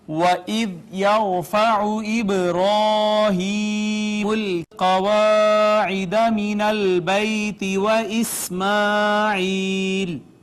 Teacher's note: یہاں پہ ناظرین واو کو ہم نے ہونٹ گول کر کے ادا کیا، دال کو نرمی سے پڑھا، را ساکن ما قبل مفتوح، را کو پڑھا پر